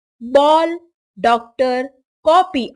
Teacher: अंग्रेजी शब्दों में जो औ उच्चारित होता है वह आ और औ के बीच की ध्वनि है अंग्रेजी शब्दों का शुद्ध उच्चारण करने के लिए औ ध्वनि को